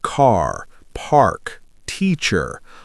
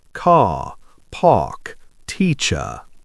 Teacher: All those R sounds are very clear in many British accents, especially what we call received pronunciation or RP. · Those R sounds at the end of words almost disappear.